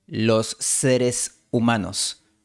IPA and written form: los 'se.ɾes u'ma.nos (los seres humanos)